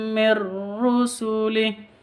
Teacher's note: nun mati bertemu dengan ro masuk tanpa dengung